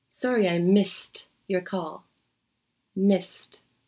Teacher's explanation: For example, in the first expression, sorry I missed your call, notice the ed ending in the past tense of the verb miss. Even though it's spelled with a d, it actually sounds like a t sound.